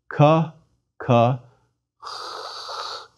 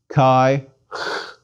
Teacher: do not have in English it's equivalent to a soft k one makes a k sound but lets the air seep through the back of the throat as one pronounces it